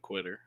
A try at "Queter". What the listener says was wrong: It's Queter. It's not pronounced Quitter. It's pronounced Queter.